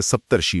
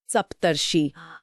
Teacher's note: अ के बाद ऋ आने पर अर की ध्वनि बनती है।